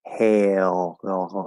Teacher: just sounding like like hey o or it's hail oh so the end of the diphthong gets sort of pulled into that half l the dark l sound